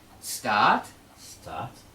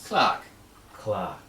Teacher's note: When there's the R and the consonant, we don't pronounce it. We don't say start. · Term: No R